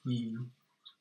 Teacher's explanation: the vowels here this top one here is you you notice your tongue is kind of forward a bit yeah and your mouth isn't open much you yeah whereas if you say this one the same sound